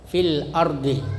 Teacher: Jadi kalau ada huruf sebelum alif maka alifnya itu tidak dibaca, yang dibaca lamnya, fil ardi.